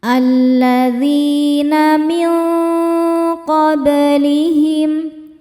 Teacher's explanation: Alladzina min qablihim, min ada hukum ikhfa hakiki ab'ad ya karena nun sukun bertemu huruf qaf. Cara bacanya nun disamarkan ke qaf disertai dengungan. Dengungnya besar.